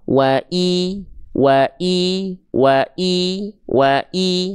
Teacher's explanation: Kalau teman-teman mendapati ya melihat ada huruf hijaiyah apapun tanpa terkecuali dia harakatnya kasrah baris bawah vokal i. Maka tolong jelaskan vokal i-nya jangan sampai miring ke vokal e.